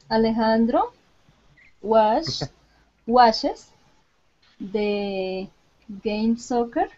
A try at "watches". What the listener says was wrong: Watches. Every time you say watches, I think you said washes. Okay, what's the difference? Ch and sh. First of all, when we pronounce the SH sound, like ship and sheep, we tend to sh.